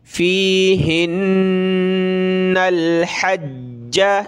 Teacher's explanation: فیہن الحج، فا یا زیر فی، ہا نون زیر ہن، نون لام زبر نل، ہا کو نون کے ساتھ ملایا، نون کو لام کے ساتھ ملایا، اور نون کے اوپر یہ تشدید ہے تو اس میں ہم نے غنہ کرنا ہے، ناک میں آواز پیدا کریں گے۔